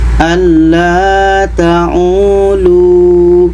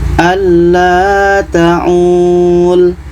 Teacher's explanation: Jawaban yang betulnya adalah lu ini tetap dipanjangkan. Panjang karena wau mati, panjang dua harakat.